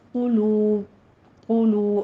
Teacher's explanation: آگے واو مدہ ہے، ہونٹوں کو گول کرتے ہوئے 2 کاؤنٹ کرنا ہے